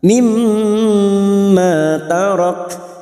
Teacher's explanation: mim yang bertasdid gunnah musaddadah kita dengungkan selama 3 harakat